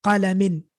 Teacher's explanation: So I'm pronouncing, again, an extra noon at the end.